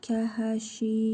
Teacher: Şin hərfini bir əlif miqdara uzadırıq. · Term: hərfi məd